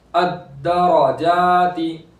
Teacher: जीम से अलिफ से पहले जबर है तो अलिफ मद्दा होगा, एक अलिफ के बराबर खींचेंगे